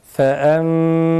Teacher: Tamam, Şeyhimiz ağzımızı tamamen ve hemen kapatıyoruz. Sakin nunlar önceki harfin hareketini okuduğumuz gibi mime çeviriyoruz. Ve ağzımızı tam bir şekilde kapatıyoruz.